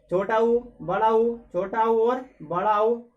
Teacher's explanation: ऐसे स्वर जिनका उच्चारण करते समय क्या हो? हमारे होठ गोलाकार या वृत्ताकार में बनेंगे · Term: वृत्त मुखी, वृत्तमुखी